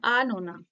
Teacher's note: আনোনা কি হয়, এটা যেন উচ্চ থাকছে একরকম, যে হালকা করে টাচ দিয়ে নোটার ওপর বেশি জোর দেওয়া হচ্ছে, শ্বাসাঘাতটা থাকছে